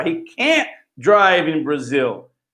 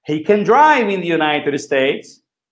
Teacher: Tá vendo que eu não falo T, eu só dou uma freada no can.